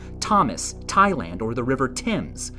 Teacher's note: here we have th making a t sound as in Thomas, Thailand, or the river Tims